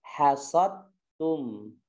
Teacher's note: Jadi dalnya tidak dikolkolahkan. Oke, kalau kita mau kolkolahkan berarti bacanya idhar dan ini salah.